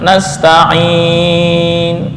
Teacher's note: Dan posisi huruf nasta'inu, huruf nun, nasta'inu dibaca sukun dengan ukuran 2 harokat. Kemudian setelah sukun baru ismamnya muncul.